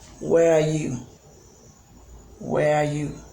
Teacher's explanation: you can see that the ending part is not going up · You see that at the end, the pitch of the voice goes down. Okay? It goes down a bit.